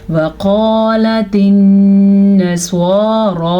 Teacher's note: स्वाद को पूर पढ़ेंगे और रा को भी पूर पढ़ेंगे। नून पे गुन्ना लाजमी है, नून पे शद की वजह से।